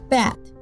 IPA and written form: bæt (bat)